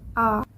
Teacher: vokal terbuka Dimana posisi lidah ini berada serendah mungkin